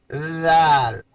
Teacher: زبان کی نوک اوپر والے سامنے والے دانتوں کا سرا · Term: مخرج